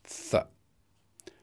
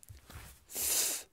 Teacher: there's no vibration of the vocal folds, so it's voiceless. It's a voiceless dental fricative. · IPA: /θ/